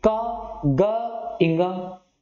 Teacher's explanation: इनके उच्चारण में हमें कम वायु खर्च करनी पड़ेगी। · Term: अल्प प्राण